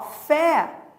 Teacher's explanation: fé é tônico também, só que com timbre aberto